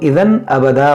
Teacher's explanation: یہاں تنوین کے بعد حمزہ ہے تو یہاں پر اظہار ہوگا یعنی یہاں پر غنہ نہیں ہوگا, اس کو اذًا ابدا پڑھیں گے.